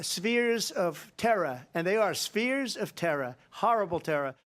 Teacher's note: a very notable sort of stigmatized feature of New York City English to when you have a final R for it to sort of become part of the vowel. So instead of terror, he was saying terra. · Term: New York accent